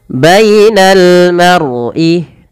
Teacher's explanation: tebalkan lafal ro-nya karena dia ada huruf ro, kita namakan dengan ro tafkhim. Harus ditebalkan, jangan dibaca mar'i tapi maru, ma-nya tipis, ro-nya tebal.